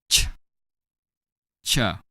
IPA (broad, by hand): tʃ